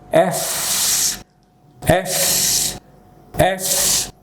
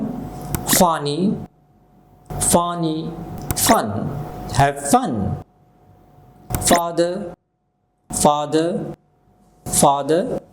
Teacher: এফ উচ্চারণ করার সময় আমাদের উপরের দাত নিজের ঠোটের সাথে লাগবে